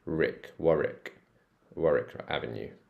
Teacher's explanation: wari wari Avenue W Rick so it's like a rick sound you can get rid of w